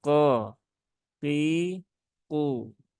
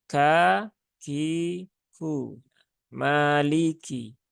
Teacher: huruf Kaf itu dia sifatnya istifal ya Ee pangkal lidahnya itu turun kemudian juga dia infitah ya Tengah lidahnya itu tidak naik · kebalikannya ya Q itu dia istila ya dia Huruf tebal ee pangkal lidahnya naik tapi dia juga infitah ya bukan idbak ya Tengah lidahnya turun